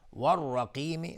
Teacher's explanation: را حکمش استعلاس چون فتحه داره